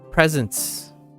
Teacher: you leave off the T and the s's